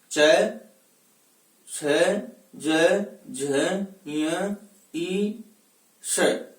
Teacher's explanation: हम इनका उच्चारण करेंगे तो जिह्वा तालु से स्पर्श करेगी